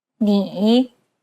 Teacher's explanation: it's the most unique tone out of all the tones because the pitch dips and then rises imagine a ball bouncing on the ground as you make this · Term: third tone